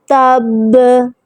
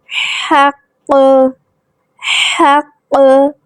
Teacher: آواز کو جماؤں کے ساتھ پلٹائیں گے، زور سے پلٹائیں گے